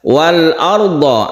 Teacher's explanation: Jelas lamnya harus terbaca jelas, tidak dimasukkan ke huruf berikutnya, maka dia disebut izhar.